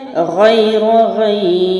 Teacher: را میں نے وقت میں باریک کیا اور پہلے اس کو میں نے موٹا پڑھا کیونکہ زبر ہے، اور حروف لین کی وجہ سے میں نے اس کو 3 الف یا کو لمبا بھی کیا.